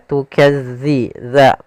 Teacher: Hati-hati dalam melafalkan dza jangan dibaca dengan zai karena nanti merubah maknanya. Tukadzi dza makhrajnya agar sempurna kita lafalkan dari ujung lidah kita menempel dengan gigi dari atas